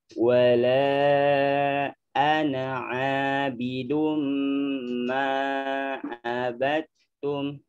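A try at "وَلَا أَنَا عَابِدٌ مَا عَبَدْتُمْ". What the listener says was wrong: Nah, seperti itu.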